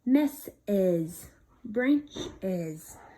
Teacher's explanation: adding a vowel sound in between two hissing sounds makes the word easier to say, okay? Now that we've added an extra vowel sound, these words are much easier to say, like mess is, branch is, okay?